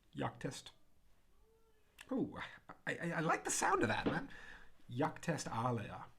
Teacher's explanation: So what they'll do is they'll drop away that A, that jacta est becomes jactest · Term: elision